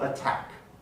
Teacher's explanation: In attack, the T is not the first syllable, the first segment of the word, but it does begin a stressed syllable. Sorry, that should have an accent mark on the A. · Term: aspirated T